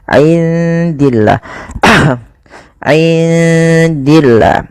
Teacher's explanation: Kemudian pada lafal indillah, indi di sini ada bacaan ikhfa, maka suara nunnya samarkan kepada huruf dal.